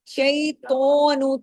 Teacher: تو کو ہیوی بھی کرنا ہے، الف کے برابر کھینچنا بھی ہے، اس کے اوپر کھڑی زبر ہے، اور یہ موٹے حروف کی فیملی سے ہے۔